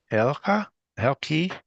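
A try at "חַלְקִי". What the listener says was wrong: You pronounced everything just fine. Accent the last syllable. Say it one more time.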